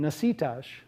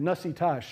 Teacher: choosing between nasitash, stress on the second syllable, and nasitash, stress on the first and third syllables. And he's choosing stress on the second syllable.